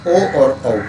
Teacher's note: ओ तो कंठोष्टम, ओ और औ का उच्चारण स्थान कंठ और ओष्ठ होता है।